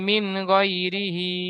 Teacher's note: নুন সাকিনের পরে হুরুফে হালকি ছয়টির মধ্য থেকে গইন এসেছে, তাই নুন সাকিনের আওয়াজকে বিনা গুণায় জাহির করে পড়তে হবে। তারপরে ইয়া সাকিনের ডান দিকে জাবার এসেছে, ইয়ালিন হবে। · হায়ের নিচে খাড়া জের এসেছে, খাড়া জের ইয়ামাদ্দার সমতুল্য, সুতরাং খাড়া জেরকে একাধিক পরিমাণ টান দিয়ে পড়তে হবে